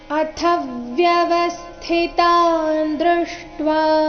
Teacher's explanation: ಥ ಮಹಾಪ್ರಾಣ ರಸ್ವ, ಅದರ ಮೇಲೆ ಆಘಾತ ಬರಬೇಕು